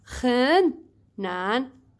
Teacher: So you have 很难 You have to change this, the first one, which is the third tone, to change it to become half third, which is 很 and you do not pronounce it 很, you pronounce it 很 quick one.